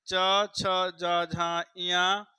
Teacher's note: इनको जो है स्पर्श संघर्षी वर्ण कहते हैं